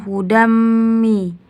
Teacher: hukumnya idgham biguna karena tanwin bertemu dengan mi dibaca ditasjidkan